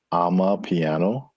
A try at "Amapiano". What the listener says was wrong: Not I'm a piano, but Ama. Ama, and it's her piano.